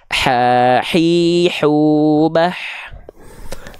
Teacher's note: kalau H kecil dia dilafalkan dari bagian tengah tenggorokan kita